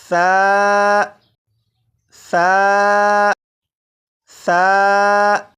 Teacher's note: सा को मैंने नरमी से पढ़ा, यानी सीटी की आवाज़ के बगैर पढ़ा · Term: नरमी से पढ़ना